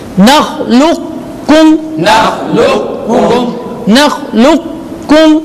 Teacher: اسے پڑھیں گے لیکن اسے صفت قلقلہ ادا نہیں ہوگی